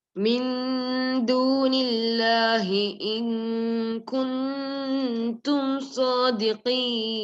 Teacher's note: you should hide the noon and do gunna.